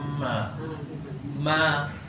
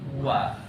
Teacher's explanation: Ma dua bibir juga tapi dia rapat. Kalau wa tu dua bibir atas tidak rapat.